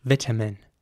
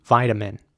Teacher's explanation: and the T would be pronounced very soft in my opinion a very soft tea vitamin almost like a D